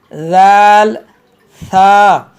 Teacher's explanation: ज़ाल था ये हरूफ लिसविया हैं, ज़बान का सिरा और ऊपर के दांतों के अंदरूनी किनारे से अदा होते हैं। ये तीनों हरूफ वा ज़ाल था।